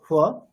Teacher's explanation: দুটো ঠোট পুরোপুরি টাচ করবো না। সেভাবে একটা ফার চেষ্টা করব।